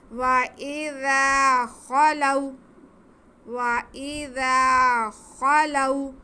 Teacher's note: وَإِذَا خَلَوْا, خا پہ زبر, لام پہ زبر, واو ساکن, واو ساکن سے پہلے زبر ہو تو واو لین ہوتی ہے, اسے کھینچنا بالکل بھی نہیں ہے. وَإِذَا خَلَوْا, وَإِذَا خَلَوْا, خا کے بعد کو تھوڑا منہ کھول کر کے حلق کے شروع والا جو حصہ ہے منہ کی طرف کا وہاں سے ادا کرنا ہے.